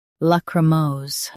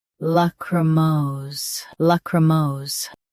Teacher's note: Both US and UK have the same pronunciation of this word. Stress mose. Keep cr soft and smooth.